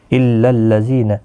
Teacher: زی یا مدہ ہے، ایک الف کی مقدار کے برابر کھینچ کر پڑھیں گے